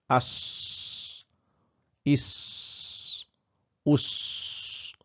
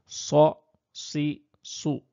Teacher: তো এইখানে আপনার বাতাস বের হওয়ার জায়গা থাকে খুব কম এইজন্য কি হচ্ছে এইজন্য কিন্তু শব্দের মধ্যে একটা তীক্ষ্ণতা তৈরি হয়ে থাকে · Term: আসফির